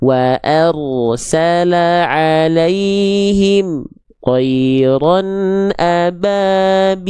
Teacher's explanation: Jangan sampai mim sukun dibaca dengan memutuskan suara.